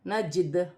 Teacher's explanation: نون زبر نہ، جیم دال زیر جد، نجد، وقفاً، نجد۔ وقف کی صورت میں دال حروف قلقلہ میں سے ہے، قلقلہ پیدا ہوگا